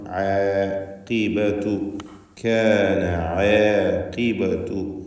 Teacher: ഖാഫിന് കസ്റായതുകൊണ്ട് കുറഞ്ഞ തഫ്ഖീം കൊടുക്കുക. ഇസ്തിഅലാഇൻ്റെ ഹർഫിൽ പെട്ടതാണ്. · ഐനും തർത്തീഖ് ചെയ്യേണ്ട ഇസ്തിഫാലിൻ്റെ ഹർഫാണ്.